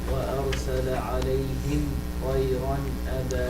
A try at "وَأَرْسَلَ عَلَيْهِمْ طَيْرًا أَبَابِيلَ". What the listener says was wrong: بس حط شوية غنة كده, flavor of غنة in it, if you will.